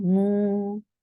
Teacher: Circle your lips very well and make it 2 counts long. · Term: dhamma